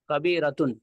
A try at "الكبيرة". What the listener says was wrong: کس خوشی میں کبیرتن پڑھ رہے ہیں آپ؟ وہی تو پوچھ رہا ہوں کس خوشی میں کبیرتو.